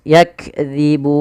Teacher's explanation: Zal hati-hati, jangan yakzibun, jangan diganti dengan zai. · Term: zal tipis